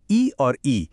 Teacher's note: वहीं इ और इ ये तालु से आते हैं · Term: तालव्य